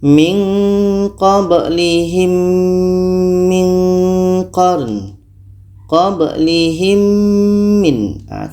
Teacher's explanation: mim mati bertemu mim ini idgham syafawi kita dengungkan